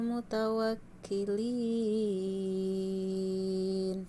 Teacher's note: itu adalah mad arid disukun karena mad tabi'i dibaca waqaf. Itu panjangnya harus 6 harokat.